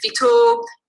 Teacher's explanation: the ventive in Hausa is marked with a suffix o, long vowel o, but also a high tone, a high replacive tone · So if we see here, our base forms, fita means to go out, and if you add the suffix o, you get fito, And you also get high tone on the root. So whatever the lexical tone was, it gets replaced by high tone